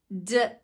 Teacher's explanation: D the beginning of dog can't be held out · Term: stop sound